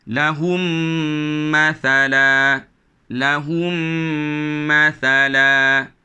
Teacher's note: dirapatkan di bibir dan didengung-dengungkan serta ada di masukkan ke dalam huruf yang kedua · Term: idgham Syafawi